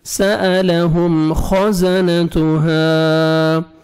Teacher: خا کو موٹا کر کے پڑھنا ہے آپ نے اور زا کو زور سے پڑھیں گے